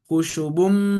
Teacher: Contoh khusyubummu dia 99. Ketika bertanda tasdid maka sempurna dimasukkan ke dalam mimnya. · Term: idgham dengan sempurna